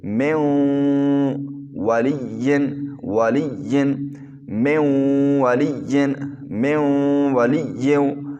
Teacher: اور آج کا قاعدہ کیا ہے کہ نون ساکن کے بعد جرملون میں سے واو آ جائے شد والا تو وہاں ادغام بھی ہوگا اور غنہ بھی ہوگا